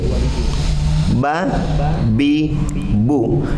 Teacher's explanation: Berarti bi itu menyentuhkan dua bibir.